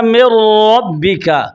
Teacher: نون را میں داخل کیجئے تو بن جائے گا من ربک، نون را میں پورا داخل ہو رہا ہے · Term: ادغام تام